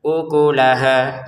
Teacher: Untuk ukulaha di sini tidak ada yang panjang kecuali ha